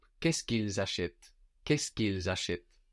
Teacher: here actually we would have the liaison and the contraction, all forming one clump.